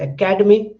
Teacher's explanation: when I say academy, ka is more stressed